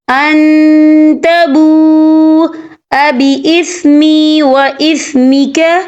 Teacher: اور آگے دیکھیں ان تبو، یہاں پہ واو مدہ ہو رہا ہے، واو ساکن ہے، واو ساکن سے پہلے پیش ہے اور اس پر مد ہے، یہ مد جو ہے مد متصل ہے، اس کی مقدار 4 عدد کے برابر ہے، ٹھیک ہے، تو ہم اسے 4 عدد کے برابر کھینچ کے پڑھیں گے۔